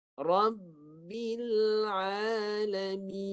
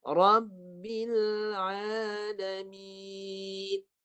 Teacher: Lidah naik saja, tekan kat hidung. Dan masuk ke hidung tu jangan lama, sikit saja untuk menyempurnakan bunyi nun, mati.